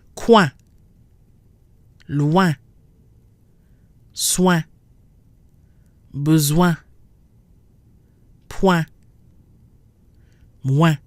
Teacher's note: A W sound, w, followed by the nasal IN, which is un. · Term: nasal combination ouin